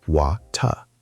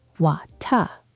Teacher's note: In British English, the T is very clear, very sharp. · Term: clear T